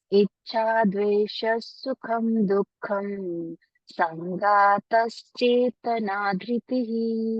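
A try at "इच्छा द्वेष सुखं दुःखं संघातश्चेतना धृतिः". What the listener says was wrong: Very good.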